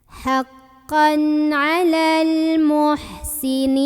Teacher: Di sini ada alif lam qamariyah karena ada alif lam ketemu huruf qamariyah yaitu mim. Maka cara baca lam sukunnya ini jelas, idhar qamari.